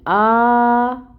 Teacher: آ کو حمزہ کو 2 حرکت لمبا کھینچیں گے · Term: مد صغیرہ